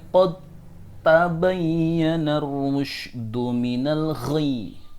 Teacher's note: Ini ada qad, dia bertemu dengan ta. Maka qad di sini diidghamkan huruf dal matinya ke huruf ta.